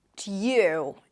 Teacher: It's a T sound, a y, and then the tense u as in food.